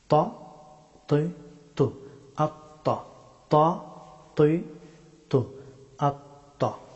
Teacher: ত হরফটি উচ্চারিত হয় জিহ্বার অগ্রভাগ এবং সানায়া উলিয়া, এই দুই দাঁতের মাড়ি। · ত হরফটি মুখ ভর্তি করে উচ্চারণ করতে হয়।